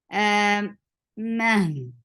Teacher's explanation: Ma for fatha open your jaws. Ma is not long at all, so you're not stretching the sound of meme, but you are giving Rakhawa on ha.